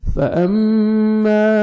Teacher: میم مشدد غنہ کریں گے، الف مدہ 1 سیکنڈ، میم کو کھینچنا بھی آپ نے